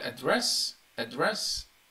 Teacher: this stress is on the second syllable and this is a verb